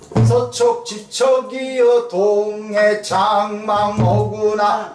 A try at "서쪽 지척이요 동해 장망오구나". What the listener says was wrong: 리듬이 리듬감이 안 살아 서쪽 지척이여 동해 장망오구나 서쪽 지척이여 서쪽 지척이여 동해 척이여 서쪽 지척이여 동해 장망오구나 해야 소리여 서쪽 지척이요 동해 장망오구나 하면 안 돼.